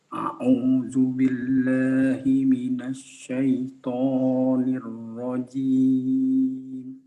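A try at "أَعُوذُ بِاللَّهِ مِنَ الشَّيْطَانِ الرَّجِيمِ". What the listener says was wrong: A'udzubillahi minasyaiton. Ini menggunakan shin ya. Sya bukan shad. A'udzubillahi minasya.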